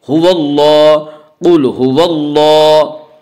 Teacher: اللہ کے لام سے پہلے زبر ہے، اس لیے اللہ کے لام کو پر پڑھیں گے